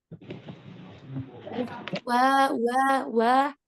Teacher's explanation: huruf wau Itu otomatis enggak akan tebal lidahnya tetap aja turun datar